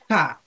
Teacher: থা অক্ষরটা জিহবার আগা থেকে নরম করে পড়তে হয় এই যে জিহবার আগাটা হচ্ছে মাখরাজ আর এই যে নরম করে